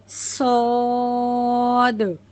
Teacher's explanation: सौद में याद रखिए कि वो मोटा हर्फ है। मुंह को गोल करके पढ़ना है।